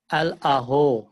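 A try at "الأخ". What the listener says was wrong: আল-আখু, আল-আখু, খ উচ্চারণের সমস্যা। আল-আখু, আবার বলেন আল-আখু।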